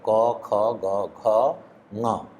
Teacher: कवर्ग का मतलब है क, ख, ग, घ, ङ और अ तथा विसर्ग, इनका उच्चारण स्थान कंठ है।